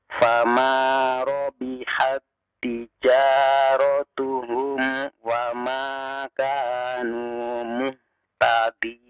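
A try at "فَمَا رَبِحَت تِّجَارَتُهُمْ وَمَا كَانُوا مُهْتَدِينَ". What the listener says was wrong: Iya, barakallahu fiik. Ya, bagus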